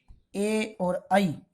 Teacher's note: ए और आई ये कंठ तालु से पुकारेंगे